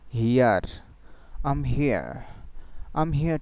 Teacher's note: so the final R will not be pronounced except there is a vowel after it in the following word